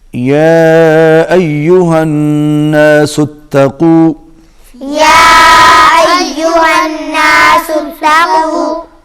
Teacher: یا کے اوپر مد ہے، اس کو کھینچ کے پڑھیں گے